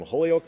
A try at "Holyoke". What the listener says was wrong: It's actually pronounced Ho-yoke. As in the whole yolk of an egg without the L.